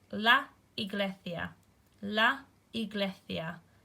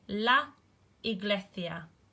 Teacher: the S is not S, it's more like the TH sound that we make in thing